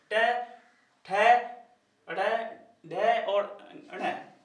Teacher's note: जीभ जो है ना ऊपरी भाग से, जीभ के ऊपरी भाग से मुड़ जाती है, मतलब एक योगा टाइप करती है, तो इसलिए इनको मूर्धन्य, इसलिए इनको मूर्धन्य या मूर्धा भी कहते हैं।